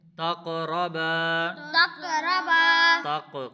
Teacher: مدہ ہے ایک الف کے برابر لمبا کریں گے. تقربا تق قاف پہ قلقلہ کریں گے، را کو موٹا پڑھیں گے، قاف کو بھی موٹا پڑھیں گے